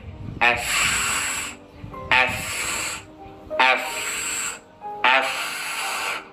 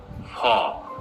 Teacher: এই উচ্চারণটা হচ্ছে উপরের দাঁত আর নিচের ঠোঁট লেগে যাবে আর এই দাঁতের ভেতর দিয়ে একটা বাতাস বের হবে খেয়াল করেন এফ এফ এফ এফ not ফ অলওয়েজ এফ ফ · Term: f